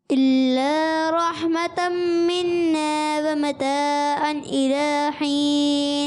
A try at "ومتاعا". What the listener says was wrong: ومتاعا، عین کی ادائیگی کلیئر کریں، ومتاعا إلى حين،